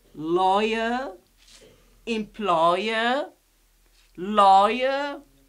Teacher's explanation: They have the same triphthong. Very nice. It is oy. We pronounce it as oy.